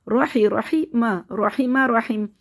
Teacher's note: ہا کو حلق سے نکالنا ہے، را کو موٹا پڑھیں گے کیونکہ را کے اوپر زبر ہے